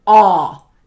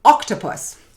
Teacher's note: we have our short o vowel sound, which says ah as in octopus